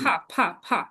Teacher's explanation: এই টোনটা নিচে জি, নামতেছে না, এই টোনটা নিচে নামবে, এটা টোন বলে, 4 নম্বর টোন, ফলিং টোন